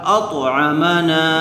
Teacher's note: الف مدہ ہوگا، نون کو تھوڑا کھینچ کر پڑھیں گے.